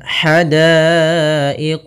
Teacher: ha kecil halus dari tengah tenggorokan kita